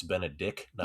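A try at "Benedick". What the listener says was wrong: There is no T.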